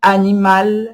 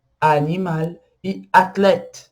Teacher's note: A, normalmente, a gente pronuncia ele aberto, igual no português. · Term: A aberto